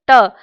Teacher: जीभ की सहायता से जब आप बोलेंगे ट तो आपकी जीभ का जो आगे का हिस्सा है वो थोड़ा सा पीछे जाता है। यहां जाता है इस साइड इसको हम बोलते हैं मूर्धा या ऐसे शब्दों को हम बोलते हैं मूर्धन्य।